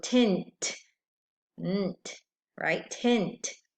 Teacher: at the end there are two consonants blending the n and the t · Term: consonant blend